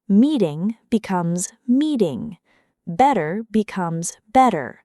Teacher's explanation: The flap t is the soft d like sound you hear in words like meeting, better, strategy, or data during fast American speech. Instead of a hard t, the tongue quickly taps behind the teeth.